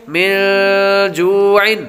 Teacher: نون ساکن کے بعد جیم حروف اخفا میں سے آ رہا ہے تو غنہ کریں گے